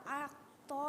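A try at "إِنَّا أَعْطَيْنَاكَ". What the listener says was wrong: Bukan ak. Kalau itu miripnya ke huruf kaf. Di sini ya, pangkal tenggorokannya. itu kalau aktoina itu huruf kaf.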